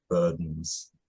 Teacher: the duh unlike the TA isn't becoming a glottal stop · I think it's d released straight into a syllabic n.